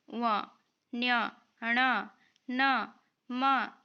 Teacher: नासिक्य जिन व्यंजनों के उच्चारण में दांत ओष जीभ आदि के स्पर्श के साथ वायु नासिका मार्ग से बाहर आती है